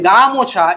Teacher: এই গা শব্দটির উপর কিন্তু জোর পড়ছে এই জোর পড়া এই যে বিষয়টা জোর পড়াটাকে আমরা বলছি শাসাঘাত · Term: শ্বাসাঘাত